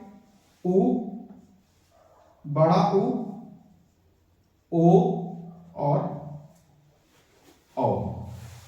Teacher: वृत्तमुखी जिन वर्णों को बोलते समय मुंह का आकार वृत्त के समान हो जाए, मुंह का आकार वृत्त के समान बन जाए